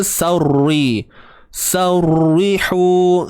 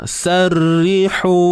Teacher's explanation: Okey, relax, bagi lidah keadaan tenang. Pangkal lidah dalam keadaan yang tenang, tidak menaik. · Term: nipis